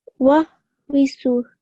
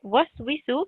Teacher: Keep up the what sound whenever you see a wow. So I shouldn't hear any v. It's just a what sound.